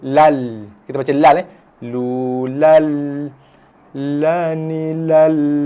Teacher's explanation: Baris 2 bertemu dengan lam menghasilkan idgham masuk bila tanpa dengung